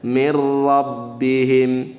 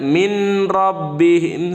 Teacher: Asal jangan dibaca min rabbihim, salah. Di sini nunnya melebur dengan huruf ro, tapi tidak didengungkan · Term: idgham